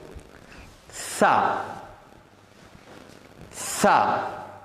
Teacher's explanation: இந்த எழுத்தை நாக்கையும் மேல் பல்லையும் ஒட்டி இந்த எழுத்தை உச்சரிக்கிற போது சிறியதொரு காற்றை விட்டு இந்த நாக்கையும் மேல் பல்லையும் பிரிச்சுட்டோம் இந்த இஸ் என்ற சவுண்டு வரும்.